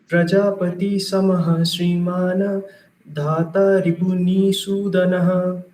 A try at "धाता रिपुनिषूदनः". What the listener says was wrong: धाता रिपुनिषूदनः. ये नी दीर्घ नहीं है, देखिए. छोटा होता है वो ह्रस्व होता है, बड़ा होता है वो दीर्घ.